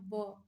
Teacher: दंत और ओष्ठ से बोले जाते हैं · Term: दंतोष्ठ